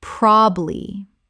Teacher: Two syllables in natural speech. The middle syllable is almost always dropped.